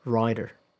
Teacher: there is a difference in the vowel length. Um the vowel in rider is a little longer.